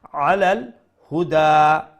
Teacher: This ha is the small ha, the bottom throat ha, the easy one.